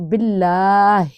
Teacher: تشدید والا حرف 2 دفعہ پڑھا جاتا ہے نا، لیکن اس میں کھڑا زبر کو بھی ادا کرنا ہے